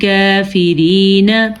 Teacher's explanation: اس میں ہم نے ہا کا مخرج کا خیال رکھنا ہے, را کو باریک پڑھنا ہے کیونکہ را کے نیچے زیر ہے, یہ کاف کو باریک پڑھنا ہے کیونکہ یہ باریک کاف ہے.